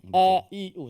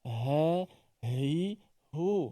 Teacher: Kalau hamzah, walaupun hamzah makhraj sama dengan ha, tetapi hamzah lebih kuat.